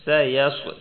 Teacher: سیص صاد موٹا ہے، سین بریک، صاد موٹا